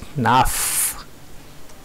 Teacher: Though the na is written like that, it should be sounded like naf. The visarga here after na is sounded like an F.